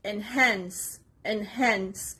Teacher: the stress is on the second part on the letter H enhance it's a verb it means to intensify or increase the